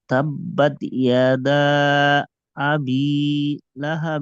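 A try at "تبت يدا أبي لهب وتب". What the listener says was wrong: হবে ইনশাল্লাহ, ইয়া টান দিবেন না, ইয়াদা। ওয়াতাব। যেহেতু আমরা যে হরফে আমরা থামছি, এখানে দেখেন বাতে কিন্তু আমরা থামছি, অক্ফ অক্ফ করছি, আর বায়ের উপরে তাসদিদ আছে। তাসদিদওয়ালা হরফে যদি আমরা অক্ফ করি, তাহলে হালকা একটু ধাক্কা হয়, হ্যাঁ। যেহেতু ওয়াতাব্বা, ঠিক আছে?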